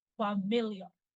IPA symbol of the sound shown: f